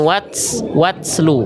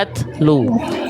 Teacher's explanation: Ta ketika bersukun, kesalahan yang sering kali terjadi dilafalkan berlebihan sehingga keluar bunyi seperti s. · di huruf ta sukunnya jangan sampai ada bunyi wat's lu. Jangan ada bunyi s-nya.